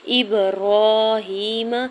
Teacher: حمزہ کی زیر کو با ساکن کے ساتھ ملاتے ہوئے قلقلہ کریں گے، را کے اوپر کھڑی زبر، ہا کے نیچے کھڑی زیر، دو حرکت کے برابر کھینچ کے ادا کریں گے۔